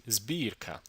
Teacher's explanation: plosives cannot just be preceded by s, but also by the voiced alveolar fricative z